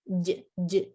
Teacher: And for jim, the tongue touches the upper palate and then moves away